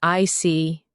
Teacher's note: When you show understanding with I see, your tone drops slightly to show calmness. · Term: intonation